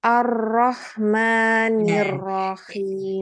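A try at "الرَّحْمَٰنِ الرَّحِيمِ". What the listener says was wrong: Jangan terlalu banyak getarannya. Ar-Rahmanir-Rahim. Jangan begitu. Ar-Rahman. Ar-Rahmanir Rahim. biasa memang kalau orang Jawa itu rohnya itu memang lebih ini dia itu lebih getar dia emang.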